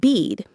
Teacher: the vowel in bead is longer because it's followed by the voiced duh. This is also related to a phenomenon called prefortis clipping where vowel sounds are shortened before voiceless consonants.